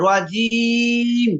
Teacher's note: জিমের মাখরাটা হচ্ছে জিহ্বার মধ্যখান উপরের তালুর সঙ্গে লাগবে